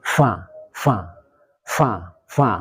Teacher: Hamas itu berhembusnya nafas, jadi nafasnya itu tidak ditahan, ada hembusan nafas.